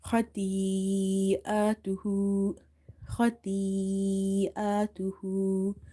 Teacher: madde muttasil, attached mad, and amount of stretching is 2.5 alif